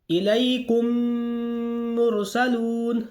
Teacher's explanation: میم ساکن کے بعد میم آ گیا تو میم کو میم سے ملاتے ہوئے گننا کے ساتھ پڑھیں گے